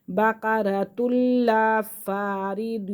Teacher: تنوین کے فوراً بعد لام یرملون میں سے آ رہا ہے تو یہاں پہ ہم غنہ نہیں کریں گے